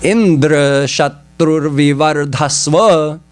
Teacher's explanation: They pronounced everything else the same, but they made it antyodatta. Emphasis on the end of the word Indra.